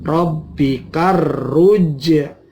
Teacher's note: Rabbikar ruj'a, ada al ta'rif ketemu ro, maka alnya tidak dibaca jelas karena menjadi al syamsiyah